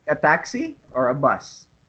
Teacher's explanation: So the word or signals a choice here. Notice the rising intonation on taxi, the first choice, and the falling intonation on bus. So here, because you are giving two choices, so the first one is it always goes up, the intonation, and then the intonation falls down on the second one.